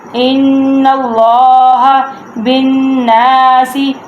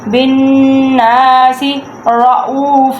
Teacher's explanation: با نون کے ساتھ اٹیچ ہو رہا ہے، نون کے اوپر تشدید ہے، تو اس لیے جہاں پہ بھی نون کے اوپر تشدید آ جائے تو وہاں پہ گننا ہوتا ہے کہ آواز ناک میں سے نکالتے ہیں